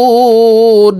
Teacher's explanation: ومما رزقناهم ينفقون এখানে ইকফাহ গুন্না, নুন সাকিনের পরে ইকফার হারফ ফা আসছে, এই কারণে এই নুন সাকিনকে নাকের ভিতরে লুকাইয়া গুন্নার সহিত পড়ব। এখানে 3 আলিফ টেনে নুনকে সাকিন করতে হবে